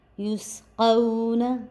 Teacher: یہ حرف لین ہے اس وجہ سے ہم نے اس کو نہیں کھینچا تو نرمی کے ساتھ ادا کیا